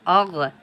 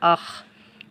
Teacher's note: কণ্ঠনালীর শেষ ভাগ থেকে উচ্চারণ হয় গাইন খ